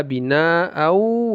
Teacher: dia ke wunnya kemudian dilamakan dighunahkan kan firasu wasamaa binaau ya ini mad wajib muttasil boleh empat atau lima harakat tapi wajib dia antara 5 sampai 4 sampai 5 harakat binaa